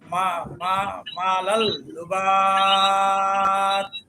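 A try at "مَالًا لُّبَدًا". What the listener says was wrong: তাইলে তো এক জবর থাকলো না। হ্যাঁ, আপনি বলছিলেন কলকলা হবে, কলকলা হবে হয়তো যদি এক জবর থাকতো, তাহলে এক জবরের পরিবর্তে জজম হতো, সেই ক্ষেত্রে কলকলা হতো।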